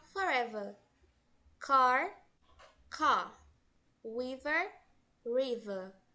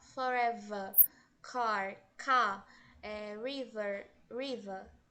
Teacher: exemplo forever ele lá eles pronunciam forever River então reparem que eles não pronunciam o final aquele r bem forte